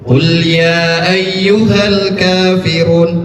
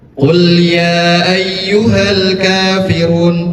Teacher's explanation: membaca dengan pendek dua harakat seperti layaknya mad thabi'i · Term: mad jaiz munfasil